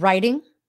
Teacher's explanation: you say it with the D sound not the T sound which is very American